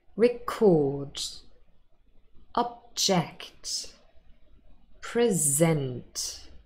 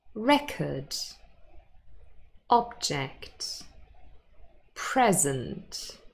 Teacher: so we have verbs those are stressed on the second syllable and then nouns and they are stressed on the first syllable